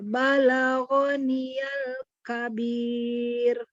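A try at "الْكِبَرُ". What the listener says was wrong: Masalahnya bukan al-kabir, tapi al-kibar. Ra-nya ditebelin lagi. Ra-nya tebal. Bar, bukan bar. Ya, ba-nya tapi tipis. Jadi ba-nya tipis, ra-nya naik. Al-kibar. Jadi ba-nya masih harus tipis ya.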